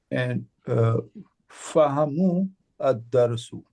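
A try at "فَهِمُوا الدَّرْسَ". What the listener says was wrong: Yeah, and fahimu. fahimu, because ha takes a kasra. Yeah, so fahimu ad-darsa.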